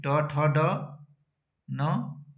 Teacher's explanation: Last वर्ण का उच्चारण नासिका से होती है और बाकी जो बचे वर्ण जो हैं उसका उच्चारण स्थान क्या होगा, मूर्धा ही होगा।